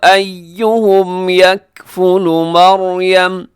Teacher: مریم یہاں را جو ہے موٹا پڑا جائے گا کیونکہ را سے پہلے زبر ہے